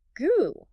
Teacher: the root of the tongue raising up to block the throat. >> Goo, >> which is exactly what your tongue does when you say goo.